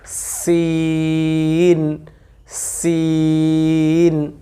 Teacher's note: সিন উচ্চারণ করার সময় একটু চিকন বাতাস বের করে তারপরে উচ্চারণটা করব